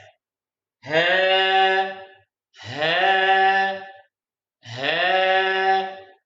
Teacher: The letter Ha comes out from the part of our throat which is nearest to our chest